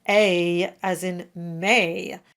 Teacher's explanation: And this sound is always a challenge because of the dreaded diff thong. It's a single sound a, not a double sound.